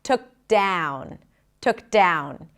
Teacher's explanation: Then we connect the k to the D, took down. The ow vowel is a diphthong, just like with the word out. Starts with the a as in cat. So even though it's spelled with an O, it's like a front a sound.